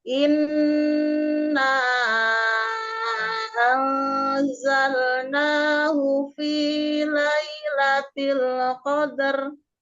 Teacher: Di situ ada gunah musadada dan ada mad jaiz munfasil. Panjangkan empat harakat.